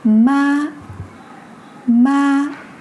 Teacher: The first tone is a high flat tone. It's like a sustained musical note at the highest of your pitch.